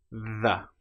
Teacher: The sound is made by putting your tongue either between your teeth or very close behind with a slight gap. The and then we let our vocal cords engage. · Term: voiced version